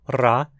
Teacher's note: A rótica é uma vibrante alveolar mesmo, ra, e não uma aproximante como no inglês, nem um som cultural como no francês ou alemão.